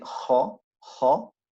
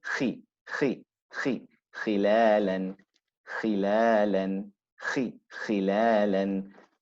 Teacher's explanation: the roundedness becomes less when it carries a kasra.